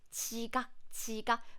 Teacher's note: when 지 sound comes at the beginning of the word, then it sounds like CH. It sounds closer to CH.